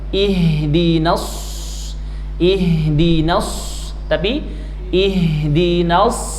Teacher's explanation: masuk kepada huruf shad, makhrajnya di ujung lidah, shad, huruf torofi